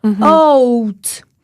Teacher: Même chose avec le « O » dans « out ». On commence avec « A » et on va jusqu'à « ou ». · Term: diphtongues